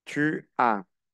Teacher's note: La S final no se pronuncia.